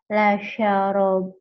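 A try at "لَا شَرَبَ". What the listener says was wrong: Panjang. La syaroba.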